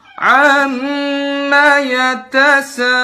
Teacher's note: Ini memanjang-manjangkannya pada huruf gunnah. Mim sama nun yang bertasydid dipanjang-panjangin. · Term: tatloninul gunnat